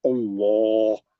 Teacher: گول منہ کرنا, زبان کو اٹھانا, زبان کو ایسا لپیٹنا, اس کا کنارے کو اچھا کر کے پڑھنا, آواز بھاری رہنا. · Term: منہ بھر کے پڑھنا